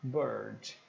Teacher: como fosse um som de o mais abafado com R misturado